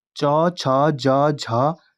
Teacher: च, छ, ज, झ इन 4 वर्णों को कहते हैं, तो इनको स्पर्श संघर्षी व्यंजन कहते हैं